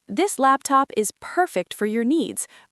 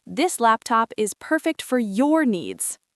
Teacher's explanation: The first emphasizes the product, the second emphasizes the personalization.